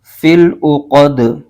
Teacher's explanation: دال کے نیچے زیر ہے اور آگے وقف تام یعنی آیت مکمل ہونے کی علامت ہے، یہاں پر وقف کریں گے تو دال کی زیر ختم ہو جائے گی اور دال ساکن ہو جائے گا، اور دال حروف قلقلہ میں سے بھی ہے اور اس کو پڑھتے ہوئے قلقلہ بھی ظاہر ہوگا